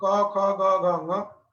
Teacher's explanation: क का उच्चारण स्थान कंठ, ख का उच्चारण स्थान कंठ